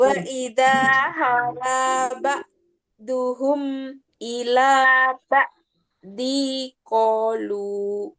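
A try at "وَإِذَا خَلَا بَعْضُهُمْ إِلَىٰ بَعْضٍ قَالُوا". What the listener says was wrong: Ini ada dengung nak. Ba'ding ding ko dengungnya dengung tebal. Din ketemu qaf. Ang tebal.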